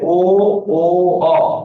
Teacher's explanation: তিনটা ধ্বনি আছে যাদের উচ্চারণে ঠোঁট গোল হয় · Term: গোলাকৃতি